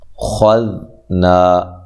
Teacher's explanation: خا کو موٹا ادا کرنا ہے، ذال کو باریک ادا کرنا ہے، نرم ادا کرنا ہے، اور ذال کو ہلانا نہیں ہے